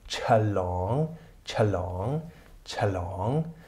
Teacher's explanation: wobei Ch und L ein Pseudokluster bilden und nicht chl, chlong, nicht chlong gelesen, sondern eben mit Lufteinschluss